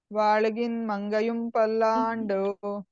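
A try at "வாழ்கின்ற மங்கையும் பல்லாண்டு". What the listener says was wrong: వాల్గిన్న వినిపించాలి మీరు వాల్గిన్ చదువుతున్నారు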